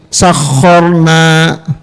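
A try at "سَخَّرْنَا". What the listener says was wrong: Ucapkan sakharna. Khorna. Awas, kalau masih ada getaran berarti belum pas ya. Takrirnya belum pas.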